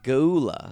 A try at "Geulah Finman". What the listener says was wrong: he didn't do the pause. I feel like there's a little bit of a pause right there. I know, but I feel like it's Geulah.